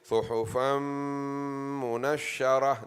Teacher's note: Tanween followed by mim idgham ma'al gunna.